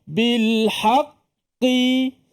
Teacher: Tak ada kena-mengena pun dengan mulut bibir. Dia qaf mana pangkal lidah.